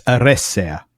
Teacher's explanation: the second last syllable is the e with the deresis on it which is a light syllable. It's short. It doesn't have any consonants after it and so therefore the stress has to go on the third last.